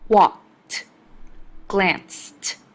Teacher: In walked and glanced, the ed makes a t sound.